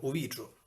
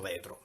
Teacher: anche la vocale I che si apre in E